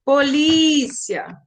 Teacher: Elas têm a penúltima sílaba mais forte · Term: paroxítonas